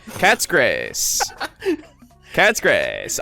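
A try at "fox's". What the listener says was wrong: You pronounced fox a little bit low there. Foxes.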